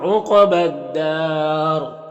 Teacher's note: وقف کریں گے تو را کا زیر سکون سے بدل جائے گا، تو را کو پر پڑھیں گے اور مد عارض وقفی ہوگا، تو اس طرح سے پڑھیں گے۔